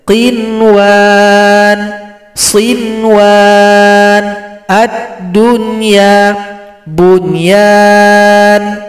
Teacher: Dibaca jelas saja, tanpa dengung.